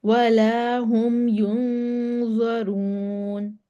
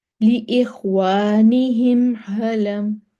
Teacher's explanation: میم کو دونوں ہونٹوں کے خشکی والے حصے کو ملا کر بغیر غنہ کے ادا کریں گے ، اس کو اظہار شفوی کہتے ہیں، یعنی کہ میم کو